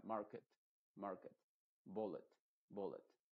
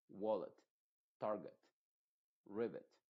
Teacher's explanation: no con una e muy clara sino una e más apagada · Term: I modificada